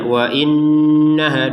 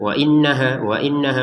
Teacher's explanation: Wa innaha di sini kita nun tasydidnya didengungkan ya